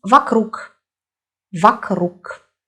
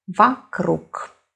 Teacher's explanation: Now O is not stressed and we hear A.